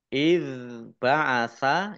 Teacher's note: nun kasroh ya sukun mat tobi'i panjang 2 harokat iz ba'asa ya zal sukun ini bacaan bukan kol-kolah jangan dipantulkan